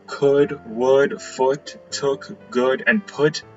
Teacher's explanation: So the vowel that I use that's close enough that I can find in the IPA is this symbol right here. This is a near back rounded vowel